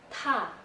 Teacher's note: Dinamakan aspirated consonants karena waktu kita melafalkan konsonan-konsonan berikut, hembusan udara atau nafas yang dikeluarkan itu banyak, berbeda dengan waktu kita melafalkan plain consonants.